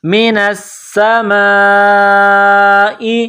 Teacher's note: ز میم دو زبر زم، رج زم، رج زم، نون کو سین کے ساتھ ملانا ہے، سین میں سیٹی کی آواز پیدا کرنی ہے۔